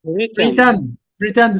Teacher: So the stress here lies on the second syllable, pretend.